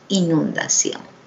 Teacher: Su sílaba tónica justamente es ción.